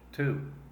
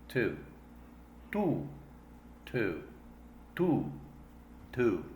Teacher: when we say to in English that u sound is not so deep the lips are less rounded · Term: long u sound